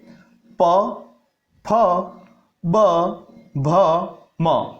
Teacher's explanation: प वर्ग का जब उच्चारण किया जाता है तब हमारे दोनों होठ जो है वो आपस में मिलते हैं। जैसे प, फ, ब, भ, म, ऊपर वाला और नीचे वाला दोनों होठों का मिलन होता है, इसलिए इसका उच्चारण स्थान है ओष्ठ।